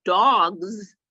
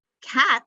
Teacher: one has a /z/, sound and one has the /s/ sound on the end